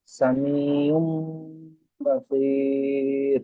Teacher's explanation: আইনের উপর দুপেশ তানবিন এসছে এবং তানবিনের পরে বা এসছে, তাই মিম, তানবিনকে মিম দ্বারা পরিবর্তন করে একালিফ পরিমাণ গুণনা করে পড়তে হয়।